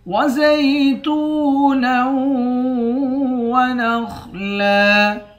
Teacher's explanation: وزیتونا، تا کو واو کے ساتھ ملا کر ایک الف کی مقدار کھینچیں گے، واو حروف مدہ ہے، نون کو واو کے ساتھ ملا کر نون پر غنہ کریں گے، خا کو موٹا پڑھیں گے، آخر میں دو زبر ہے، دو زبر کی تنوین میں جب وقف کرتے ہیں ایک زبر پڑھا جاتا ہے۔